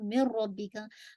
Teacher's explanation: नून साकिन के बाद रॉ आ रहा है, तो आप मिन रब्बिक नहीं पढ़ते ना, मिर रब्बी का, अगेन रॉ को आप हैवी करेंगे, मिर रब्बी का, ठीक है, रब्बी। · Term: इदगाम